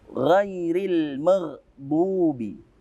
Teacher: Alif lam yang kita baca alma. Tidak kita sembunyikan seperti yang idgham syamsiyah. Maka kita sebut ini dengan alif lam qamariyah.